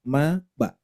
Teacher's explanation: mim itu di asyafatan ba juga di asyafatan dua bibir